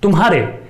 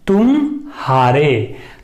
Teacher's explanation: तुम्हारे बोलते हुए हम म के बाद तुरंत ह पे पहुंचते हैं, तुम्हारे, कोई गैप नहीं है